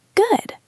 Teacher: if you say good with a rising tone or a wave tone up and down, it sounds open.